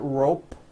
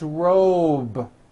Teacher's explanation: Same thing with robe. Also has a voiced B ending. It's not rope with an unvoiced P. It's robe.